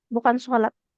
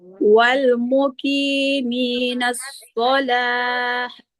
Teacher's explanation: Jadi huruf taknya itu diubah menjadi hak sukun kalau kita wakaf. Jadi bukan sholat tapi as-sholah.